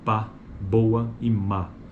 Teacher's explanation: a gente percebe o articulador ativo é o lado inferior e como articulador passivo temos o lábio superior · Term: bilabial